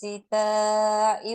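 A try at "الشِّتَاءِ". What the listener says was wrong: Shin shinnya diperbaiki. Shin di mana makhrajinya? Tengah lidah ya. Jadi tengah lidah naik ke langit-langit. Jadi bukan sin, tapi shin ya. Tengah lidahnya naik. Shin. Rihlatasyita gitu. Rihlatasyita. Nah, jadi bukan rihlatas jadi SYI gitu ya. Tapi shi gitu ya. Dari tengah lidah. Tengah lidah. Sha, shi, shu, sha. Nah, shi, shu ya, tengah lidah naik. Rihlata syita.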